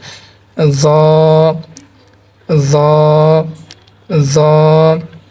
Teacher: এটা একটু পাতলা হবে, বুঝছেন? আপনার সামনে দুই দাঁতের আগা এবং আপনার জিহ্বার আগা একসাথে সংযুক্ত হয়ে এই হরফটি উচ্চারণ করবেন।